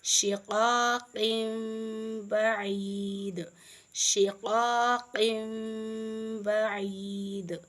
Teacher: تنوین کی آواز کو ہم میم میں بدل دیں گے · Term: اقلاب